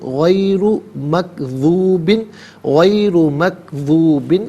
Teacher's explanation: را پر پیش را کو پر کر کے پڑھیں گے